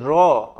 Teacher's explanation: আমরা যদি উচ্চারণ করি র, র বললে দেখবে আমরা তো বাঙালি তাই অতি সহজে উচ্চারণ করে ফেলছি, কিন্তু তুমি একটু বেশিক্ষণ ধরে র বলো, দেখবে জিভ তোমার কাঁপছে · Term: কম্পিত ধ্বনি